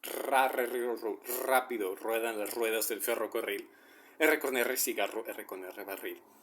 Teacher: what is happening is that my tongue is vibrating, and it's the tip of my tongue. Actually, I notice right now is more like a quarter of my palate starts there. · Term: the double R